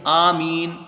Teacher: حمزہ میں کھڑا زبر ہے، 1 الف کی مقدار اس کی رہے گی